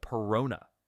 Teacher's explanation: I drop the s from personas just like locals do making it sound like perona